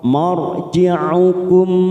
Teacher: Ra sukun yang didahului fathah kita baca tafkhim.